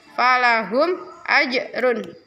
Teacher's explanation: Ada jim sukun, itu bacaan qalqalah harus mantul.